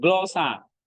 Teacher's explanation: Circumflex ini gabungan naik dan turun. Jadi dia naik dulu baru turun.